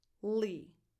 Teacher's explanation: Tense [i] as in the word “eat”.